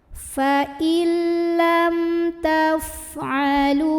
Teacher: Maka cara membacanya, mim sukun ini dibunyikan dengan jelas. Bunyinya masih dan tidak perlu ditahan. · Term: idhar syafawi